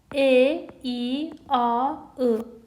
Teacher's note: e, i, a, ı, dördü də dodaqlanmayan saitdir